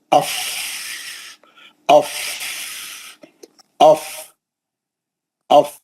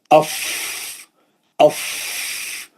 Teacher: नीचे का होठ और ऊपर के दो दांत उसके ऊपर बैठ जाते हैं और वो अदा होता है पीछे के हवा के प्रेशर से